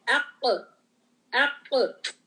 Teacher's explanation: Back side of the tongue touches the soft palate.